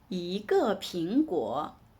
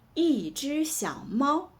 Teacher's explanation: In 一个苹果, 一 is pronounced in the second tone, but in 一只小猫, 一 is pronounced in the first tone.